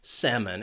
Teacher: That second syllable has that schwa sound. It's an unstressed syllable.